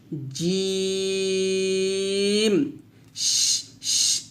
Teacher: অর্থাৎ জিম শিন ইয়া যখন আমরা উচ্চারণ করব তখন অবশ্যই জিহ্বার মধ্যখান তার বরাবর উপরের তালুর সঙ্গে লাগাবো, অবশ্যই লাগাবো এবং একটু শক্ত করে উচ্চারণ করব।